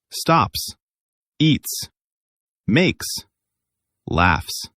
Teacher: S sound, like a snake. This happens after voiceless sounds like P, T, K, F.